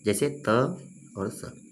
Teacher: दंत की बात करें तो जिन व्यंजनों का उच्चारण दांत की सहायता से होता है, इसमें जीभ की नोक ऊपरी दंत पंक्ति का स्पर्श करती है